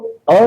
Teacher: सिर्फ अ स्वर जो है वह मध्य से बोला जाता है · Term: मध्य स्वर